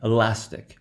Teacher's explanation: So an example of this will be something like, en français on peut dire élastique, but that word in English, it will not be stressed on the final, it will be stressed on the one before the ending